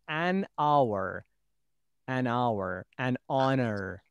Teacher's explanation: the words beginning with h that h is not pronounced